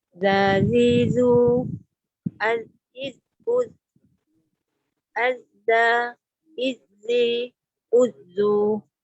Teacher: sebutan zal yang tepat. Bermaksud zal yang tanpa safir